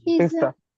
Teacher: It is sa, not za.